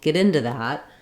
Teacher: I'm linking my into to my word that and my ooh becomes a schwa so um I'm stressing on get get in get in into